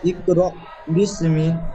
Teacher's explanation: সাকিন যুক্ত হামজাকে একটু ধাক্কা বা ঝাটকা দিয়ে আগের অক্ষরের সঙ্গে মিলিয়ে পড়তে হবে